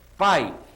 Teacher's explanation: o som de i eu vou dizer que é uma semivogal é um som mais fraquinho